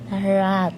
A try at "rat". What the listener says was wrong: Ra. Ra. Hindi ra. Hindi ra. Ra. Huwag mo i-apply yung Pinoy na ra.